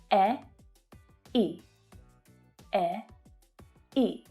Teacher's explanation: this sound is made with the e and the I vowel sounds pushed together. So it's e as in egg and the I as in sheep vowel sounds. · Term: diphthong